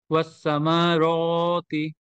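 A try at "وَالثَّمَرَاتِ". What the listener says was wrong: শুধু রতে টান হবে, আবার বলেন।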